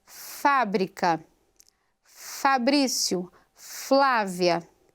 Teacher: Outro exemplo, consoante fricativa e labiodental, ou seja, ela é fricativa, a obstrução é parcial, obstrução do fluxo diário é parcial e ela se articula com os dentes superiores no lábio inferior